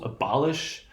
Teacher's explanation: primary stress occurs on the second syllable